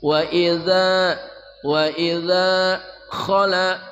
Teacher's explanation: dzal ya, ujung lidah bersama ujung gigi seri atas